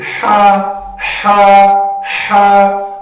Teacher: یہ جو ہا کا تعلق ہے یہ وسط حلق کے ساتھ ہے، یعنی بیچ والا جو حصہ ہے. ہا کی آواز جو ہے وہ سریلی نکلنی چاہیے.